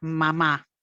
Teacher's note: logra decir mamá pero con un rango muy estrecho casi un monótono